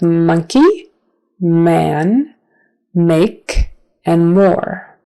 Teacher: it's also kind of a nasal sound so you're opening up that back part of your um mouth to the nasal cavity